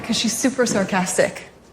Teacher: she doesn't say because. She shortens it to cause